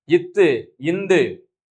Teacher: இத்து இந்து ஆகிய இருமைகளும் மேல்வாய்ப்பல்லின் அடியை நாக்கின் நுனி பொருந்துவதால் பிறக்கின்றது.